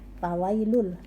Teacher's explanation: tanwin bertemu dengan lam, idgham bila gunnah ya, tidak mendengung